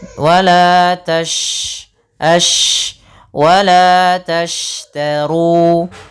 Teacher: lafal syin Itu adalah huruf yang dia memiliki sifat tafasyi tafasyi apa menyebarnya suara